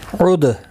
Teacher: دال ساکن پر قلقلہ ہوگا۔ و الف مدہ ہے، ایک الف کی مقدار کے برابر کھینچ کر پڑھیں گے۔